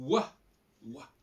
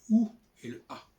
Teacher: Le W, c'est une sorte de mélange de deux voyelles, en quelque sorte. C'est le wa, le ou et le a.